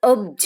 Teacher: પછી અપ plus જ તો પ નો બ થઈ જાય છે, ત્રીજી લાઈનનો અક્ષર. બરાબર, તો અઘોષ અલ્પપ્રાણના બદલે ઘોષ અલ્પપ્રાણ થઈ જાય છે. તો અપ પ્લસ જ છે તો અબજ થઈ જાય છે.